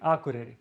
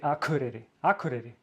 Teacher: But the people there, they say like K with a very harsh way, much harsher than we do here in Reykjavík